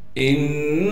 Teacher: हमजा को नून से मिलाएंगे इसलिए कि नून पर तशदीद है, नून पर गुन्ना किया जाएगा। इस हमजा को बगैर झटके बगैर खींचे पढ़ेंगे।